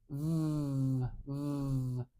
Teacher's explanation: I'm putting my top teeth behind my lower lip and I'm blowing the air out through the cracks in my teeth and I'm really making sure that I have the vibration on in my throat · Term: V sound